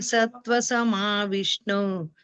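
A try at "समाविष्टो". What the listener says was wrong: ಸಮವಿಷ್ಟೋ ಸಮವಿಷ್ಣು ಅಂತ ಕೇಳಿಸ್ತು ನನಗೆ ಸಮವಿಷ್ಟೋ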